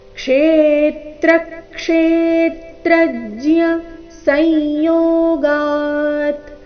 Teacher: ಕ್ಷೇತ್ರಜ್ಜಿಯ ಮೊದಲನೇ ನಾಲ್ಕು ಅಕ್ಷರಗಳ ಮೇಲೆ ಆಘಾತ